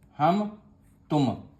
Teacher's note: میم کو ظاہر کر کے پڑھنا چاہیے، جیسے اردو میں ہم تم کی میم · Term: اظہار شفوی